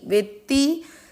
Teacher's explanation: पूरे त पर मात्रा लगेगी छोटी ई की, तो आधे त को आप वे के साथ पढ़ेंगे वेत, और त पूरे पर ई की मात्रा ती, वेत्ती। तो वे के साथ पहले आधा त पढ़ रहे हैं और फिर ती